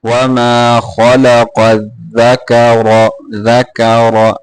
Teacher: اور قاف کو، اور دال کو صحیح طریقے سے پڑھنا ہے، را کو موٹا کر کے پڑھنا ہے ، وما خلق الذکر ذکر ذکا نہیں پڑھنا ہے اس کو،